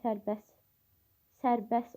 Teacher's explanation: T samit tələffüz zamanı düşür.